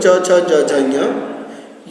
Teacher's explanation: च छ ज झ ञ, य और बड़ा शा, इन सभी का उच्चारण स्थान तालु है